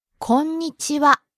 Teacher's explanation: It's not konnichiwa, it's konnichiwa. You really have to hit the n sound in there, the n syllable before ni.